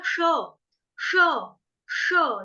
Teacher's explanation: और तेषा महम में जो श आ रहा है ना आपका, वो शलगम वाला आ रहा है, उसका भी उच्चारण की तरफ ध्यान देना। श श, जीभ फोल्ड हो जाएगी, श ज्यादा तालू को टच करेगी